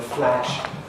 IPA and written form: flæʃ (flash)